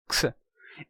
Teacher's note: É porque o som representado originalmente pelo X, que é de x, esse som é um encontro consonantal. É um som de k com s.